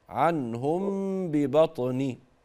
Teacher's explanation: مافيش غنه في النون الغنه في الميم